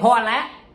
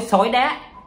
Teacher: Dấu sắc, dấu hỏi, dấu ngang, đó là những âm bổng. Khi chúng ta nói nó sẽ bay lên. Ví dụ ta nói hoa lá, nó sẽ bay lên.